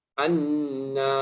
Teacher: nunnya betul khayshum, tapi a-nya nggak ada khayshumnya. Anna, dari mulut keluar.